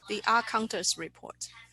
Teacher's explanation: you even connect the ah, so there's no silence between the word the and ah, and the will sound like the ah counters report, one breath of air.